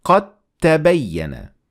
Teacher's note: when we fused these two together, the dal will completely disappear.